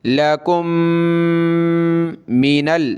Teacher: دو میم ایک جگہ جمع ہیں، دونوں کو پلس کر کے ایک بنائیں گے اور ناک میں آواز پیدا کریں گے